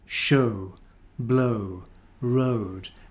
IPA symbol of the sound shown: əʊ